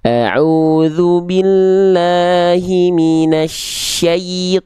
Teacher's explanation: Jadi syai ya sukun di situ harus dibaca jelas vokal i-nya. Terdengarnya vokal i.